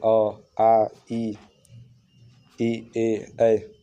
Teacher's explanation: जिन स्वरों के उच्चारण में ओठ वृत्तमुखी गोलकार नहीं होते उन्हें अवृत्तमुखी स्वर कहते हैं। जैसे जिन स्वरों को उच्चारण करते समय हमारा ओठ गोल मतलब ऐसे गोल शेप में ना बने तो उन्हें अवृत्तमुखी कहते हैं।